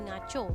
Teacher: DMK mengalami perubahan pada awal kata dan akhir kata. Konsonan K pada awal kata berubah menjadi konsonan NG, manakala diftong au pada akhir kata berubah menjadi vokal belakang separuh sempit O.